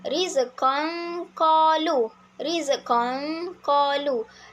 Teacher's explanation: Seperti yang saya sebut, terdapat pengecualian pada huruf kaf dan qaf iaitu dengungnya perlulah dilakukan secara sepenuhnya kerana makhraj hurufnya tertutup rapat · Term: ikhfa hakiki